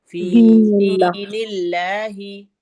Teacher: जितना फी खींचेगा उतना ही दी खींचेगा, दोनों में या साकिन है